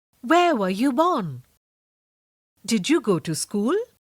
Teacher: The yes or no questions use a rising tone at the end.